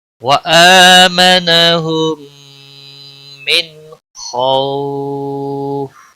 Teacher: نون ساکن کے بعد حروف حلقی میں سے خا آیا ہے تو یہاں پر اظہار ہوگا، نون کو ظاہر کر کے پڑھیں گے. اس اظہار کو اظہار حلقی کہتے ہیں.